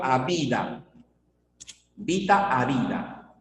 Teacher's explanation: la sonorización se da en nivel intermedio no cuando inicia la palabra sino las consonantes intermedias